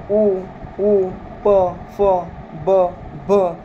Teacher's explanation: फ, ब, भ या सर्व उच्चार वर्णांचा उच्चार करताना आपली जी आपले जे ओठ आहेत ते एकमेकांना स्पर्श करतात म्हणून त्यांचा औष्ठ मध्ये समावेश झालेला आहे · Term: औष्ठ्यमध्ये